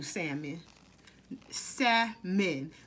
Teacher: the l is silent y'all